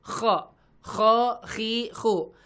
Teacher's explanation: huruf kho itu makhrajnya dari tenggorokan bagian atas